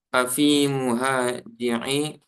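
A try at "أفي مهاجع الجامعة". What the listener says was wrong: Muhaji lagi. Bukan muhaji, mafa'ilu wazannya.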